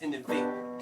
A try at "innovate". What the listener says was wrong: It just sounded like you had your hand over your mouth.